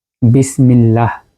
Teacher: আমরা বিসমিল্লাহ যখন বলি লামটা বারিক হয়